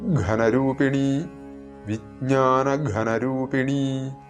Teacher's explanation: ഘ തൊണ്ട ചേർത്ത് ഉച്ചരിക്കേണ്ട അക്ഷരമാണ് മഹാപ്രാണൻ